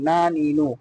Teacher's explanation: জিহ্বার আগা তারপর উপরে তালুর সঙ্গে লাগাইয়া নুন, নুন জবর না, নুন জের নি, নুন পেশ নু, না নি নু।